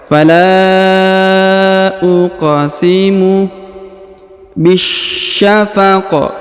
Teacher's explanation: Huruf qaf berharokat sukun, maka kita pantulkan atau kita qalqalahkan.